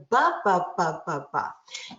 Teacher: Now, the difference between an M and a B is not what we're doing with our mouth, it's what we're doing with our velopharyngeal valve. And so the B sound requires velopharyngeal closure, whereas the M sound is a nasal sound.